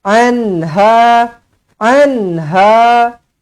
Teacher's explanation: nun mati bertemu dengan ha izhar halqi dibaca dengan jelas dibaca dengan terang